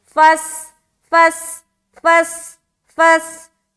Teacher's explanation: فا کو سین سے ملائیں گے، سیٹی کی آواز ظاہر ہوگی